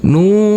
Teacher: huruf nun yang damah ini bertemu dengan huruf wau sukun maka kita baca panjang dengan panjang dua harakat